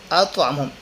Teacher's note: ایک تو طا موٹے حروف میں سے ہے، اور دوسرا اس پر قلقلہ ہے، جھٹکے کے ساتھ پڑھیں گے